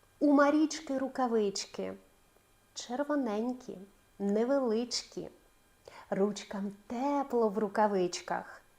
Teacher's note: Зверніть увагу що В усіх словах ч вона є твердою